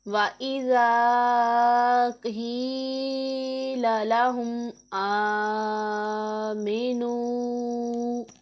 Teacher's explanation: زال میں ہم نے سیٹی کی آواز نہیں نکالنی۔